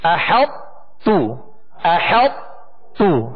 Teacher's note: آخر میں طا کی آواز نہیں نکالیں گے، تا کو باریک پڑھیں گے. احط تو. · طا کو تا میں اس طرح داخل کیا کہ طا کی صفت پر یہ صفت موٹا ہونا اس کی باقی رہی. احط تو احط تو. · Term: ادغام ناقص, ناقص ادغام